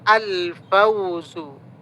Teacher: kalau ada alif lam sesudahnya fa maka lamnya terbaca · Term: qamariyah